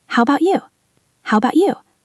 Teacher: The voice rises on the word you.